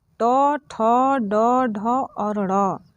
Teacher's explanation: इसके बाद से तीसरा जो वर्ग है ट वर्ग, इसमें ट, ठ, ड, ढ और ड़, ये 5 अक्षर आते हैं। और इनका उच्चारण स्थान जो है वो मूर्धा के स्पर्श से होता है, यानी कि ट, ठ यानी जीभ पीछे की तरफ जाती है। तो जो इसका स्पर्श स्थान है वो मूर्धा है।